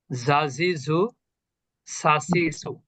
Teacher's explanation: একই জায়গা থেকে জিহ্বার আগা নিচের দাঁতের গোড়া।